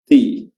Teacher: Dan makhraj huruf ta ya adalah ujung lidah bertemu dengan gigi seri atas bagian belakang